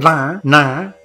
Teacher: The na comes from reasonably the front portion, but it is pushed up and therefore it is the nasal, and it is the nasal of the class called Murdan or head.